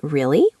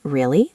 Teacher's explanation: If I say really with a rising tone, I'm asking a question. If I say really with a falling tone, I'm showing I'm bored or just confirming something. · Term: intonation